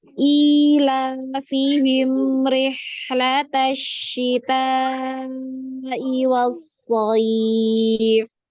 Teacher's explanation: Rihlata itu pakai H kecil ya, yang tengah tenggorokan.